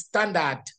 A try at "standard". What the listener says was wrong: You must pronounce the D.